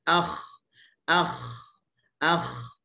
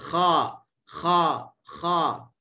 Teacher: sifat utama sekali adalah isti'la. Huruf bersifat dengan isti'la. Isti'la maksud dia apa? Dia berkaitan dengan lidah. Okey, berkaitan dengan pangkal lidah. Pangkal lidah terangkat. Itulah maksud isti'la.